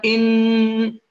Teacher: طبعا يتغير الصوت لأن الغنة تخرج من الخيشوم